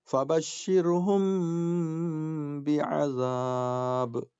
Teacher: اب یہ دیکھیے میم ساکن ہے، اس کے بعد با ہے، تو اب کیا کریں گے؟ ناک میں آواز رکھیں گے · میم ساکن کے بعد با آئے تو اخفا کریں گے، یعنی ناک میں آواز رکھیں گے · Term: اخفا شفوی